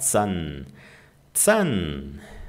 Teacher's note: Z tem som de TS, Zahn, tá? E o H, ele estica a vogal.